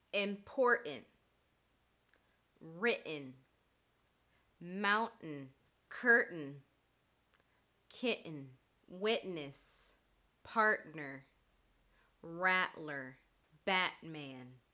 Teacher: the te is becoming glottalized we're replacing it with a glottal stop so instead of pronouncing the fully aspirated T sound TTT we're